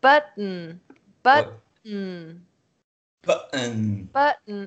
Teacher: glote. A gente fecha a glote. Então fica button. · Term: glottal stop